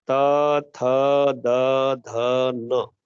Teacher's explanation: क्योंकि जब भी आपकी जिह्वा जब त थ द ध न बोलती है, तो जिह्वा आपकी दांतों से टकराती है। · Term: दंत वर्ण